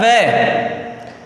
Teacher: दांतों से और होठों से मिलकर बनता है वकारस्य दंतोष्टम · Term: दंतोष्ठ